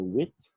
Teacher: and then we have the W, the glide W for wit.